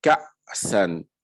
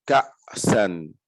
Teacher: je bloque tout au niveau de ma gorge de sorte à ce qu'il n'y ait plus d'air qui sorte pour prononcer le hamza qui porte sukun.